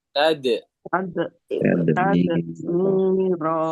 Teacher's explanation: Ya, baca nih Kalkala, huruf kalkala. dal dibaca pantul saat sukun.